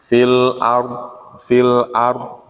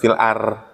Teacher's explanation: Ro mati ini bisa dibaca tafhim tarkik. Cuman kalau sebelumnya fathah dibaca monyong. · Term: tafkhim